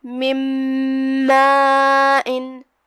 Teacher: تو ہم یہ نون کو میم میں داخل کر کے غنہ کے ساتھ اور تشدید کے ساتھ یہ حکم کو ادا کریں گے · کلمت مَاءٍ یہاں مد ہے، مد واجب متصل. ہم اپنی آواز 4 مد کے برابر لمبی کریں گے. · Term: ادغام بغنہ